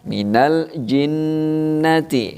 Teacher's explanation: Ini hukum bacanya adalah gunnah. Ya, dibaca 2 harokat ya, didengungkan 2 harokat ya.